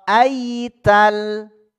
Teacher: Ya Sukun sebelumnya fathah ingat ya larinya ke i bukan ke e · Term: layin